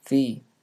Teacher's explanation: a stoppage of air when the tongue goes between the teeth it is not a stop but a fricative since some air passes through